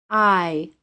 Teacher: If you listen very carefully to the pronunciation of this sound, you will hear a very brief Y sound at the end of it. I. The long I is a two-sound vowel.